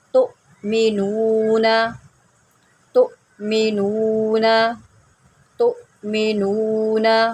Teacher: اب یہاں پر بھی دیکھیں حمزہ ہے، اس کے اوپر یہ جزم ہے تو حمزہ ساکنہ ہے تو اس کو ہم جرک دے کے پڑھیں گے